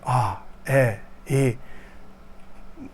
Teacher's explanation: Little bit of like a breathy voice as you say them.